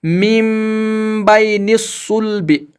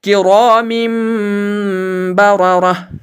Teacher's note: نون کی آواز کو میم کی آواز سے بدل کر گنہ اور اخفا کے ساتھ پڑھیں گے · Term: اقلاب